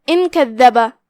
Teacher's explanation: پھر یہاں نون پہ جزم ہے، پھر حرف الکاف ہے، یہاں بھی حکم الاخفاء ہوا تو ہم نون کو بغیر ظاہر کیے ہوئے لیکن غنہ کے ساتھ یہ حکم کو ادا کریں گے